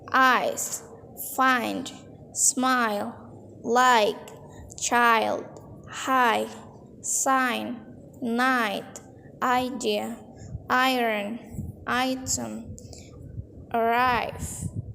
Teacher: pronounce a nice and full ah and then connect it to the e · The first sound in a diphthong is typically longer and louder, so make sure that you pronounce a nice and full A and then connect it to the E.